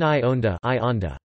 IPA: iː ʔônda